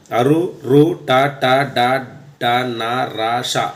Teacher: నాలుకని పై భాగాన్ని తగులుతూ పలికే అక్షరాలు అన్నమాట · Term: మూర్ధన్యాలు